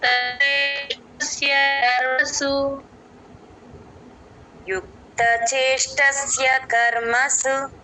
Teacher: చేష్ట ష కింద ఒత్తు ట లేదండి ప్లేన్ ట అది గమనించండి ఎక్కడ మహాప్రాణాలు లేవు